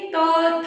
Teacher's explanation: आपकी जीभ जो है वो किसको स्पर्श कर रही है, आपके दांतों को, तो ये माना जाएगा दंत्य।